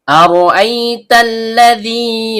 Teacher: Ta ujung lidah bertemu dengan pangkal gigi seri atas · Lam ujung lidah bertemu dengan langit-langit bagian depan. · Hamzah berbentuk alif atau hamzah qot keluar dari tenggorokan bagian bawah.